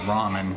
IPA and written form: ˈrɑːmən (Ramen)